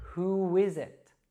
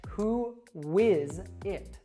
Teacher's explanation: what happens when we have a U sound followed by another vowel is it becomes a W sound.